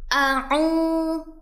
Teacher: Selanjutnya ada huruf hamzah dan ain yang tidak boleh sama terdengar bunyinya karena huruf hamzah terdapat makhrajnya ada di pangkal tenggorokan, sedangkan huruf ain ada di tengah tenggorokan. Jadi bunyinya a'u.